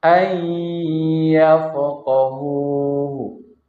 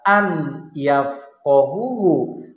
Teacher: tapi nunnya melebur ke dalam huruf ya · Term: idgham bi gunnah